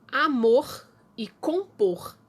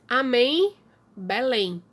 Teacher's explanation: elas são palavras que nós chamamos de oxítonas que a sílaba tônica é a última